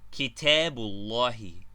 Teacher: When the word with united alif and wesle is preceded by another word, the sound of the alif is lost, and only the sound of the concluding vowel of the preceding word is uttered.